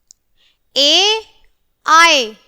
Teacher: इनका जो स्थान होगा उच्चारण का वो होगा कंठ तालु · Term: कंठ तालिव्य